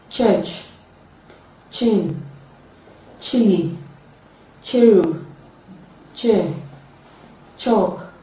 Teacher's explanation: raising the tongue to the alveolar ridge and the middle of the tongue touching the hard palate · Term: palato-alveolar affricate sound